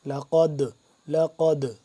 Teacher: موٹا کر کے پڑھیں گے، دال کے ساتھ جب ملے گا دال ساکن ہے تو اس پہ ہم قلقلہ کریں گے، یعنی کہ آواز کو پلٹائیں گے واپسی کی طرف